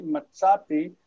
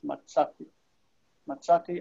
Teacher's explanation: Notice the aleph is quiescent and the vowel lengthens. Okay, it rejects the shva and the vowel lengthens.